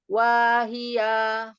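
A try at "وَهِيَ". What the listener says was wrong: Tidak ada yang panjang. bacaan yang tidak ada yang panjang, dia harus adil. Jadi kalau wa-nya segitu, hi-nya segitu, iya-nya segitu. Wahia. iya, jangan wahia. Wahia sama.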